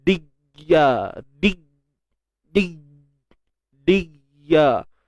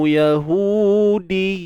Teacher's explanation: Biarkan ada aliran suara berlaku yang disebut rakhawah.